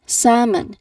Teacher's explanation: the letter L it's there in the spelling but we don't pronounce it at all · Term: silent L